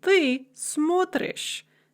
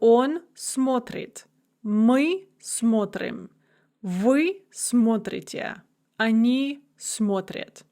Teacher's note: Now the stress is going to shift to the first syllable and it's going to remain there for the rest of the paradigm. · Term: stress shift